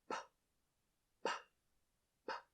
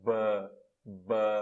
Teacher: Vocês notam que o P e o B, B, a forma, tudo que eu faço na minha boca é igual. A única diferença é que o P não tem vibração e o B vibra. Suas cordas vocais vibram.